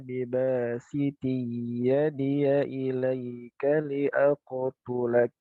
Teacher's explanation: jadi tetap ada idgham bil gunnah, tapi dia jangan terlalu lama juga